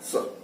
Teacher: दंत सा कौन सा होता है? दंत सा वह सा है जो जीभ की नोक को दांत से लगा करके और उसे वापिस कर ले। तो बोल के देखिएगा स, तो वो जीभ जाती है और जाने के टकराने के बाद वापिस लौटाती है श स।